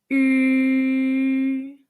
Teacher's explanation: the double e sound in the english word b but with rounded lips